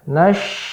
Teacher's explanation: Nah, perhatikan pada sya ya. Sya tengah lidah bertemu dengan ya langit-langit bagian tengah